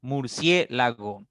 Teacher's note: En cie está la mayor intensidad, esa es la tónica y las otras 3 son átonas